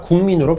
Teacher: 국민에서 기역하고 미음이 만나면은 여기 있는 기역이 이응으로 바뀌지요. 그래서 국민이 아니라 국민으로 발음이 됩니다. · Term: 비음화